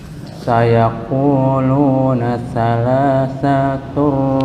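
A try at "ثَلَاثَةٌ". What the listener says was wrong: Sa kepanjangan. Yang sa yang kedua. Bukan salasatun, tapi salasatur.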